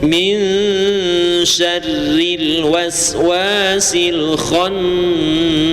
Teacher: rin-nya adalah ro tarqiq ya ra tarqiq itu tipis